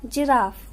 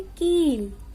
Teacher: छोटी ई की मात्रा से बने शब्दों का उच्चारण थोड़ा जल्दी होता है, जैसे जिराफ, और बड़ी ई की मात्रा से बने शब्दों का उच्चारण थोड़ा दीर्घ होता है, जैसे कील